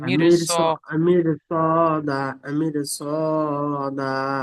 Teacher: রসাকিনের আগে জের আছে, তাই র বারিক হওয়ার কথা ছিল, কিন্তু রসাকিনের পরে হুরুফে মুস্তালিয়া এসেছে, তাই পুর করে পড়তে হয়। তাই র কে পুর করে সদের পড়তে হয়।